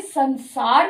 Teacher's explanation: स स जो है वो उसका उच्चारण स्थान दंत है दांतों के पीछे से दांतों को छूते हुए सार निकलता है इसलिए अनुस्वार भी दांतों की साउंड ही देता है